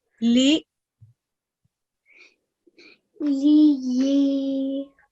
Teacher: letter ya that also has a shadda, so we need to make ya sound for 2 times, and then letter ya that is haruf madda, we're going to make sure that we produce the sound for 2 seconds because it is haruf madda.